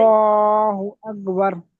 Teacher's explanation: লামের মাথায় তাসদিদ, ওই লামকে মোটা করে পড়তে হবে, লামকে তখন পুর বা মোটা করে পড়তে হবে।